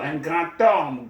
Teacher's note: The D becomes a T sound when it comes into contact with a vowel sound.